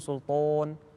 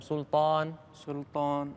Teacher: الألف اللي بعد حروف التفخيم نفس سلطان والأخرى، لا تضم الشفتين عندها فتخرج قريبة من الواو